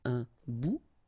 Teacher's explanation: Remember, final T not pronounced.